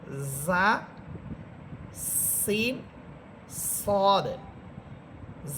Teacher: জা, সিন, সদ, এই 3টি হরফ ঝিঝি পোকার মতো আওয়াজ হবে।